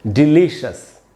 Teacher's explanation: एंड का जो हिस्सा है, इसको शियस नहीं पढ़ के शस पढ़ना है